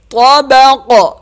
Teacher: طابق طا بھی موٹا اور قاف بھی موٹا طابق وقف طابق قاف پہ قلقلہ وقف کی صورت میں